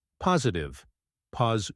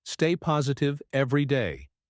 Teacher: the T in the middle sounds like a soft D in American English